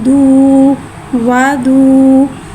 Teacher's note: वाव मद्दा को एक अलिफ यानी 2 हरकत के बराबर खींच के पढ़ेंगे